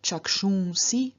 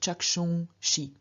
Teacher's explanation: through the rookie rule, the S at the end of the stem changes into sh, and so we get not chakshungsi, but chakshungshi.